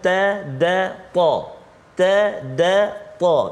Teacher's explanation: Makhraj yang sama, tiga huruf itu ia keluar hujung lidah